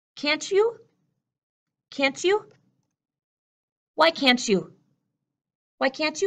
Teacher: the T and the Y are blending together to make the sound of cha